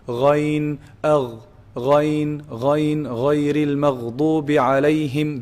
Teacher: The lower part, the bottom part, the middle part, and the top part. So ghayn is pronounced from the top part, the highest part of the throat, the closest to the mouth.